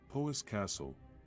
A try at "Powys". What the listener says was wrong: It's more Powys than Poe. pow, pow, pow.